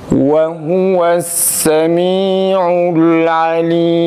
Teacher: Bir de vavlar Türkçedeki ve'ye yakın çıkmasın. Kesinlikle ve'ye benzeşmesin.